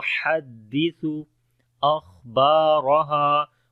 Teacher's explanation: ہا کو گلے کے درمیان والے حصے سے پڑھیں گے